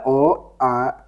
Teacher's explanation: अ और आ ये तो कंठ ध्वनि है